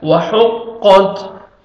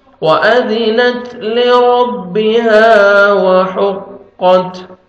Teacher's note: ہا میں ساؤنڈ نہیں جانا چاہیے. قاف کو موٹا کر کے پڑھیں گے اور تا ساکن تا کا لائٹ سے ساؤنڈ آئے گا